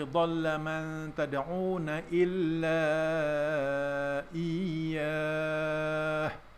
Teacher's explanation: mad jaiz munfasil, dibaca dengan kadar harakat 4 ataupun 5 harakat